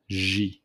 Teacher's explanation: pronounced like the English ZH sound, similar to the S in leisure